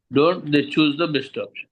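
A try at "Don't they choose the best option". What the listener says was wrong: అక్కడ పదాలను మింగొద్దండి మీరు. స్పీడ్గా చెప్పాలని ఎప్పుడూ మీరు అరాబరిగా వెళ్ళొద్దండి. నిదానంగా చెప్పండి.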